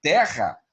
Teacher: esses dois R's têm um som de um Rzão forte. Se fosse um Rzó, seria terra.